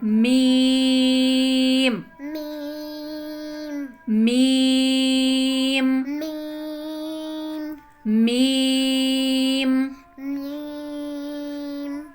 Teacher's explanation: बंद होठों के खुश्क हिस्से से